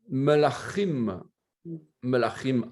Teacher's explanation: Ce n'est pas un K. On doit prononcer le Ch guttural de la gorge.